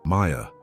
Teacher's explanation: the mah is nasal. The yah is whispered almost exhaled.